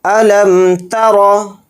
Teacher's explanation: را کے اوپر زبر ہے، را کو یہاں پر موٹا پڑھیں گے